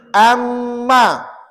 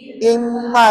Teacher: Janganlah cepat sangat bunyi. Kena bunyi dengung dua harakat. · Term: bunyi sengau